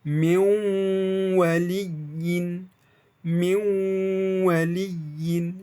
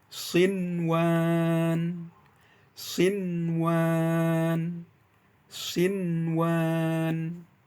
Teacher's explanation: Suara N dari nun sukunnya itu terdengar sangat jelas tanpa ada modifikasi dengungan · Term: izhar wajib